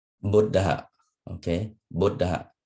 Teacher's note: Thus, the Buddha is spoken as a long syllable followed by a short one.